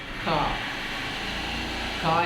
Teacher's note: നമ്മൾ ഏകദേശം തൊണ്ടയുടെ ഇപ്പുറത്താണ് ക എന്ന ശബ്ദം വരുന്നത് തൊണ്ടയിൽ നിന്ന് പുറത്തേക്ക് വരികയാണ് ക എന്ന് പറയുന്നതിന് ഇംഗ്ലീഷിൽ സി എ എന്ന്